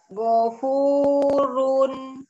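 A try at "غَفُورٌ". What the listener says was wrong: Ya, cuman apa Umi perlu melatih untuk kembali ke makhraj nunnya.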